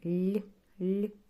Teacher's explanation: м'який подовжуваний звук так і л е один звук